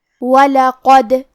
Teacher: قاف کی ادائیگی زبان کے جڑ اور تالوں کے نرم حصے سے ہے، قاف حروف التفخیم میں سے ہے، لہذا ہم یہ حرف کو موٹی آواز میں پڑھیں گے۔ کیونکہ یہاں دال پہ جزم ہے، لہذا ہمیں دال کو قلقلہ سے پڑھنا ہے، اور قلقلہ کا معنی ہے حرف ساکن کو ہلانا، تو ہم دال کو ہلاتے ہوئے یہ کلمہ کو پڑھیں گے۔